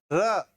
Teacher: र एक ऐसे ढलान सी जीभ बन गई, लुढ़क करके कोई वर्ण अपने बाहर आ रहा है। तो लुढ़क करके जो बाहर आ रहा है वर्ण, उसको हम लुंठित कहते हैं या प्रकंपित कहते हैं।